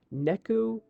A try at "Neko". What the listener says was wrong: Neku or Neko? It's not you said ku, so I was like, that's not the same.